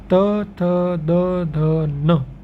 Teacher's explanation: जैसे ही हम न का उच्चारण करते हैं ये वत्स की ओर चला जाता है, मतलब दांत के जस्ट ऊपर की ओर